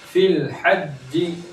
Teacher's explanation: या को सीधे लाम के साथ मिला देंगे